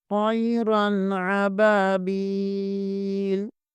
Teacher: با زیر کے آگے یا مدہ ہے، اسے بھی ایک الف کے برابر کھینچیں گے